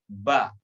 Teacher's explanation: Dibuka mulutnya, fathah, ba. Seandainya kita membaca tidak dibuka dengan penuh, maka yang keluar bukan huruf ba, tapi be. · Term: fathah huruf ba